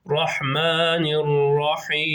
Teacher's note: nuna arkadaşlar direkt rayya bağlıyoruz Rahmanir Rahim şeklinde